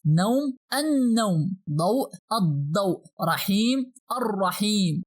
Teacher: we MUST pronounce the solar letter after AL with some pressure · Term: Shadda